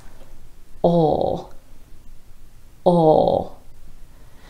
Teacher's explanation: for the dark L sound a native speaker isn't using the tip of their tongue at all the motion of the tongue is all in the back of · A native speaker actually retracts the tongue, the back of the tongue or the root of the tongue, towards the throat like this. Ol.